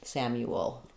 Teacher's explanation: Um, a little bit of a schwah there or an uh sound before the L. And because I'm going from a rounded U to the the dark sound, a little W connects those two.